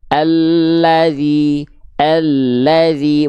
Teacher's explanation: dari tepi lidah bagian depan kanan menyusur sampai ke ujung lidah